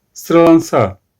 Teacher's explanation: Sıralansa sözcüğündeki bütün ünlüler kalındır. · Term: kalın ünlüler